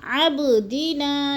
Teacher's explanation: اب کو ہم نے تھوڑا سا ہلا کے پڑھنا ہے، حروف قلقلہ میں سے ہے، با اور ساکن ہے